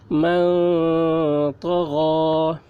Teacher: نون ساکن کے بعد حروف اخفا میں سے طا آ رہا ہے، اس لیے نون کی آواز کو ناک میں چھپا کر پڑھیں گے، اس کو اخفا کہتے ہیں۔